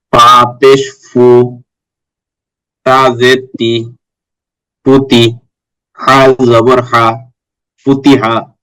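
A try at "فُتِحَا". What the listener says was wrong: জি মাশাআল্লাহ।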